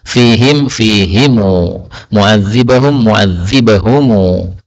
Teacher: Jadi setiap hum ini dibaca humu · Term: qiraah Ibnu Katsir